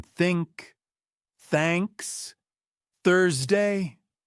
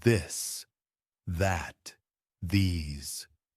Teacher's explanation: There are two versions. Voiceless, like in think, thanks, Thursday. Voiced, like in this, that, these.